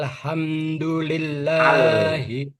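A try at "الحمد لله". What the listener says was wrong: Jadi jangan buru-buru ya di situ karena ada tawasudnya alnya jadi ditahan sedikit. Alham jangan alham jangan buru-buru. Alham alham itu ada tawasudnya, aliran angin sedikit. Ainnya coba ditarik lagi ya. Ainnya kedengarannya ke Hamzah.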